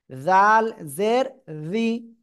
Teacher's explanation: জিব্বার আগা উপরে দুই দাঁতের আগায় লাগাবেন।